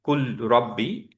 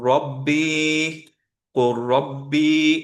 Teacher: এইটাকে একসাথে যখন পড়াই তখন অ্যাকচুয়ালি লামটা মার্জ হয়ে যায় র এর সাথে। সিমিলার রিজন যে এদের মাখরাজ দুইটা সেম। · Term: ইদগাম